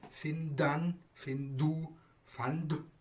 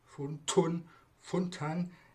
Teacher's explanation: the root final consonant in the present tense and the past tense singular is the voiced d, and in the past tense plural and the past participle voiceless t